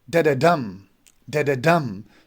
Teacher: the first 2 are unstressed and the last one is stressed one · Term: Anapestic